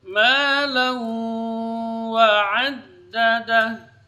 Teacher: memasukkan bunyi ke dalam huruf waw bersama dengan gunnah. Dengung keluarnya dari khayshum. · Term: idgham bi gunnah